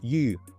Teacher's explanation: the word for fish in Chinese, and it's yu with like a rising tone